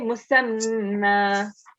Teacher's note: when you're doing a waqf, make sure you say musamma. Okay, you have to prolong it for 2 seconds.